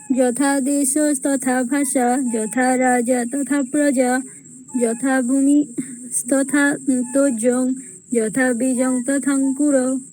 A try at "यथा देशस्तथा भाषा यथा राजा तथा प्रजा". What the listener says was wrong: बहुत शीघ्रं करोतु, शनैः मन्दं गायतु। यथा देश तथा भाषा यथा राजा तथा प्रजा।